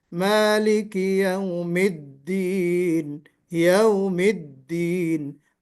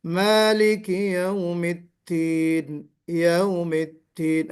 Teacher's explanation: مالک یوم الدین جب ہم کہتے ہیں دین، تو اس دال کو پروناؤنس کرتے ہوئے ہمیں آواز میں بلندی لانا ہے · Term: جہر